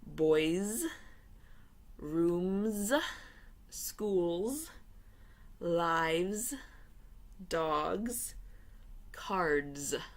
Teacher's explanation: Okay, it's not boys, it's boys. Okay, so after voiced sounds at the end of a noun, you pronounce the S as a Z.